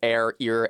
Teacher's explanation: that R is treated like a vowel sound